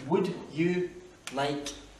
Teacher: le L ne se prononce pas, you, pas you, c'est you, le son U.